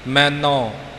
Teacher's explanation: ਇਹਨੂੰ ਆਪਾਂ ਮੈਨੂੰ ਨਹੀਂ ਬੋਲਣਾ ਭਾਵ ਨਨੇ ਨੂੰ ਲੈਂਕੜ ਨਾ ਆਵਾਜ਼ ਆਵੇ ਹੋੜਾ ਹੀ ਉਚਾਰਨ ਕਰਨਾ ਹੈ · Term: ਨਨੇ ਹੋੜਾ